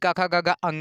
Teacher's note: का वर्ग यानी काखा गागा अंगा का उच्चारण स्थान कन यानी कंठ है